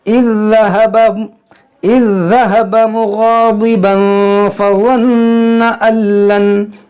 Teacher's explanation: यहाँ पर मुग़ाज़िबन तनवीन के बाद फ़ा है तो यहाँ पर इख्फ़ा करेंगे